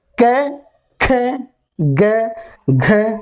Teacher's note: क्या की जो लाइन होती है वो कंठ से या गले से बोलते हैं, इसलिए ये कंठ वर्ण होते हैं